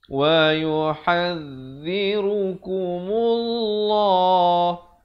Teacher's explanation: Dibacakan lafzul jalalah dengan tebal 2 harakat.